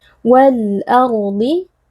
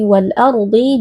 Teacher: ro merupakan Huruf tebal karena di sini ro sukun sebelumnya berharakat fathah maka kita angkat pangkal lidah kemudian huruf Dad di sini walardhi juga merupakan Huruf tebal dan